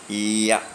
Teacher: Palatal, that is tongue touching a hard palate.